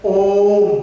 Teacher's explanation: ओम शब्द जो है आपका जो है 3 गुना समय लेता है। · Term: प्लुत स्वर